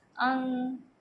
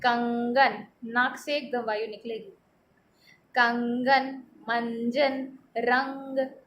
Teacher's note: अनुस्वार को जब हम बोलते हैं, तो हमारे नाक से वायु निकलती है।